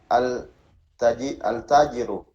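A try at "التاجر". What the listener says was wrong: At-tajiru ya. Jadi dia syamsiyah ya.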